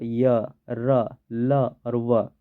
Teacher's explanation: जो जीभ का ऊपरी हिस्सा है वह मुर्धा से टकरा रहा है लेकिन बहुत ही कम मात्रा में टकरा रहा है · इसके उच्चारण में दांत जीभ होठ इन सबको एकदम बहुत कमकम छूना पड़ रहा है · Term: अंतस्थ व्यंजन